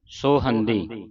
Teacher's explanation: ਜਿਹੜੇ ਸੇ ਦੇ ਉੱਤੇ ਹੋੜੇ ਦੀ ਆਵਾਜ਼ ਉਚਾਰਨ ਕਰਨੀ ਹੈ ਜਿੱਥੇ ਹੋੜਾ ਲੱਗਾ ਔਂਕੜ ਦੀ ਆਵਾਜ਼ ਨਹੀਂ ਕੱਢਣੀ